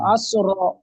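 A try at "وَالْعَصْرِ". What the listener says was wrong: ওয়াও যাবার ওয়া হয়, তাহলে আল হবে না, ওয়াল হবে, ওয়াল। ওয়াল আসর, আসর নয়, রটাকে রকে সাকিন করে দেন, এখানে আয়াত আছে, গোল গোল আয়াত আছে, তো রকে সাকিন করে ওয়াল আসর, ওয়াল আসর।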